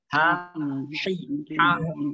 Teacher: Ha itu harokat makhrajul hurufnya di pangkal tenggorokan. Kalau kita rasakan ketika menyebut huruf ha di pangkal tenggorokan sudah bergetar, itu huruf ha.